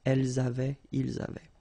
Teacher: The only difference is that you will have to make the liaison between the two.